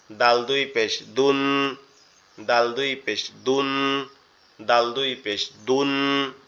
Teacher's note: জিহ্বার আগা, উপরের দুই দাঁতের গোড়ার সঙ্গে লাগবে